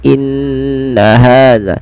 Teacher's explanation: bacaan gunnah pada lafal nun berharokat tasydid. Maka caranya adalah menahannya. Inna, tidak langsung inna hadza, tapi tahan dulu sepanjang 2 harokat, inna hadza.